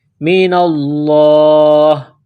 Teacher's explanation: جب یہاں سٹاپ کریں گے وقف کریں گے تو ہا کو سائلنٹ کریں گے